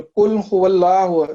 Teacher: قاف جو ہے وہ حروف قلقلہ میں سے ہے اور موٹا ادا ہوتا ہے